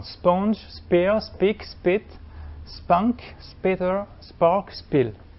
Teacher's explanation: un mouvement, cette fois de friction, donc de la sifflante S, stoppé dans une zone externe, la zone bilabiale